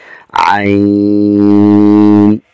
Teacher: عین، گلے کے درمیان سے حرف ادا ہو رہا ہے